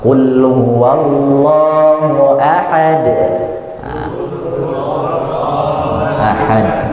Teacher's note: Lebih tebal, lebih tebal, lebih keras karena dia termasuk dalam qalqalah kubra.